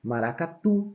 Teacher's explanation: o tu é a última sílaba e ela é forte. Por isso que ela é uma oxítona.